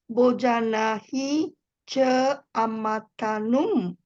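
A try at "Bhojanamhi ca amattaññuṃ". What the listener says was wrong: Bhojanam, not Bojanang. Bojanamhi. Bojanam. Amatanyum, nyum. nyung, not in, not n. There's a specific diacritical mark over here. Amatanyum.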